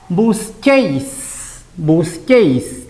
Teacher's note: La U no suena nada.